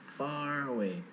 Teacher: Your lip is coming to the teeth, but it's not as hard as the V. So it's not that 청소기 sound. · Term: F sound